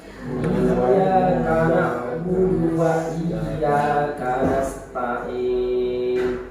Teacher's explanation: perhatikan di sini semuanya ya-nya tasydid nih. Iya, jangan i-nya dia yang tasydid ya, ditekan ya-nya.